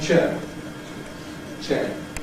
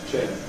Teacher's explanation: you can hear people saying square, fair, sit on a chair, chair. In other words, producing a long monophthong, chair.